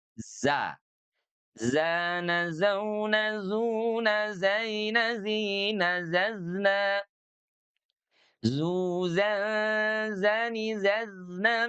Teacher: jadi huruf zai itu diucapkan dengan cara clean, bersih, tidak ada angin yang keluar, tetapi dari segi suara dia mengalir.